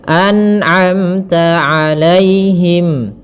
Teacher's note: Kemudian pada lafal amta ada mim mati bertemu ta, izhar syafawi, jelas suara mimnya.